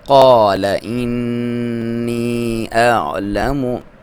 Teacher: عین کو کلیئر پڑھیں گے، حمزہ کو بھی اس کا تحقیق کے ساتھ پڑھیں گے · اور نون پہ آپ نے غنہ کرنا ہے